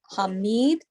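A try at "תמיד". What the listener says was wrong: Tamid. This is the T, the ta.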